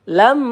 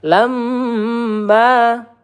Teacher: lam mim bertasydid gunah musyaddadah ya kita panjangkan dua atau tiga harakat